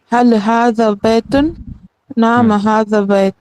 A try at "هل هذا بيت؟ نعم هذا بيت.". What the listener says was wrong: हाँ, नाम के बाद थोड़ा से हल्का सा तवक्कुफ करें, स्टॉप, थोड़ा से ब्रेक लें।